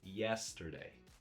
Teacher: And then the day gets the secondary stress, which is not as high as the primary stress, right? So when you say it, you say yesterday, not yesterday, yesterday.